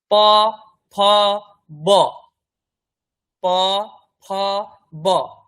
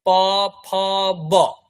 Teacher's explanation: দুটো ঠোঁট জুড়ে যদি উচ্চারণটা করেন প, ফ, ব, এটা হয়ে গেল বর্গীয় ব